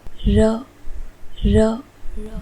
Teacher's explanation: हमारी जीवा थोड़ा सा स्पर्श करती है मूर्धा स्थान को जब हम र इस वर्ण का उच्चारण करते हैं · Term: ईषद स्पृष्ट